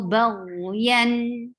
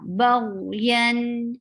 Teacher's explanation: Very clear sound of tanween because it has izhar.